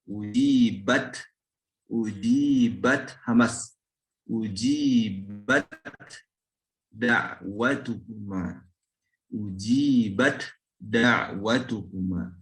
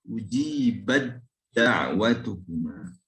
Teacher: Kalau belum diidghamkan dibacanya ujibat, ujibat hamas, ujibat da'watukuma, ujibat da'watukuma. Diidghamkan, maka huruf ta ini sifat hamasnya menjadi hilang dan hurufnya berubah menjadi dal. Ujibat da'watukuma, langsung huruf dal.